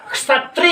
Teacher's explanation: तो इसमें आप देख रहे हैं का और सा मिला होता है, यानी छा छत्री, जो आप जिसको बोलते हो, छत्री नहीं है, क्षत्री है, क्षत्री। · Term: संयुक्त व्यंजन